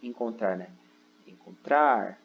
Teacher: O trar, ele é a sílaba tônica aqui, mas ele não recebe acento gráfico, ok?